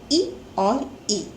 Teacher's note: इसका उच्चारण स्थान है वो है स्वर तंत्र का दूसरा भाग यानी कि तालु